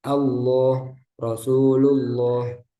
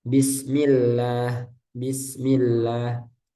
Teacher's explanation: Ketika sebelumnya ee kasrah maka dibaca tipis · Lam di lafaz jalalah Allah sebelumnya fathah dan dhammah maka dibaca tebal.